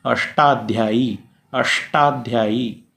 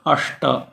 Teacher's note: जैसे कहिए अष्टाध्यायी, अष्टाध्यायी, अष्ट कहने से ट के साथ में ही श का उच्चारण हो रहा है, अष्ट। तो इनका स्थान मूर्धा है।